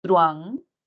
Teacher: Si analizamos la palabra truán, no es truán, sino truán, diremos que hay una vocal cerrada al lado de una vocal abierta, donde la mayor fuerza de voz está en la vocal abierta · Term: diptongo